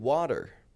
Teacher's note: a flap T is a light D sound that comes between two vowels. It's got a very soft sound, as in the word water.